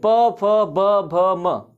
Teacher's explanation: ये जो दोनों आपके ओठ हैं यहीं बंद हो जाते हैं, फिर खुलता है। · बोल के देखिए प वर्ग के सभी को, प वर्ग के सभी को बोल के देखिए, प, फ, ब, भ, म, आपके दोनों होठ क्या हो रहे हैं, बंद हो रहे हैं, खुल रहे हैं, बंद हो रहे हैं, खुल रहे हैं। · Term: ओष्ठ